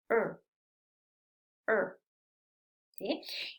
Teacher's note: es como si fuera una r pero sin pegar la punta de la lengua en el paladar se levanta un poquito la punta de la lengua para pronunciarlo